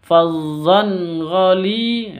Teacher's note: tanwin bertemu dengan ghain, bacaan izhar halki, izhar halki bacanya jelas. Fazzan ghali, tanwin dan ghainnya jelas.